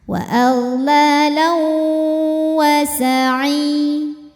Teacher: Selanjutnya ada hukum idgham bi gunnah karena ada tanwin fathah menghadapi huruf waw. Cara bacanya tanwin dileburkan ke waw disertai dengung.